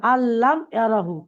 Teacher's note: তানবিন নুন সাকিনের পরে র আর লাম যদি আসে, তাহলে বিনা গুন্না মিলিয়ে পড়তে হবে।